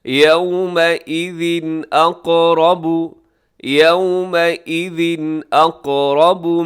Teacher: تنوین کے بعد حمزہ آ گیا تو یہاں پہ ہوگا اظہار، غنہ نہیں کریں گے، تیزی سے پڑھ دیں گے اسے